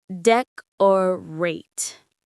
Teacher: The stress is on the first syllable, deck.